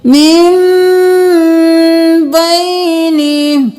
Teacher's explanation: हम इख्फा शफ़ी करेंगे, यानी होंठों में आवाज को छुपाएंगे